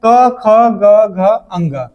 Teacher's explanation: सबका उच्चारण कंठ से हो रहा है, तो इसको क्या बोलेंगे? कंठ व्यंजन